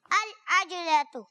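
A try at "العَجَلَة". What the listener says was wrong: عج نہیں, عجا. العجا. العجلۃ. ٹھیک ہے, جیم پر کیا ہے؟ زبر ہے.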